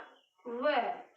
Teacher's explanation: हमारे दांतों का भी प्रयोग होता है और हमारे होठों का भी प्रयोग होता है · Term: दंत प्लस ओट